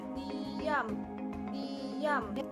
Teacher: Konsonan nasal bilabial, fonem M, dihasilkan dengan cara mengkatupkan dua bibir dan udara dikeluarkan melalui rongga hidung.